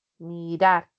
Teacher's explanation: Cuando yo separo mirar, pues recae en la última sílaba la mayor fuerza de voz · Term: aguda